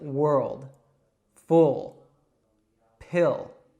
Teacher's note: just to give you a few more examples of the dark L